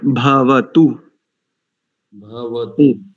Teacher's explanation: भा में महाप्राण का प्रयोग है